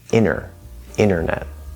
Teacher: the n an example inside of a word would be internet we drop that first t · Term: nt plus vowel rule